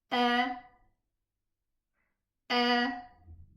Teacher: So by parting by spacing of the two vocal cords I was able to pronounce the hamza fata